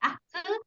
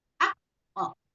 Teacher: qalqalah pada huruf qaf, karena qaf ini termasuk salah satu huruf al-istilah, maka keluarnya pun harus tebal ya, tidak akse, tapi akko ya, akko harus ke vokal o ya, akko.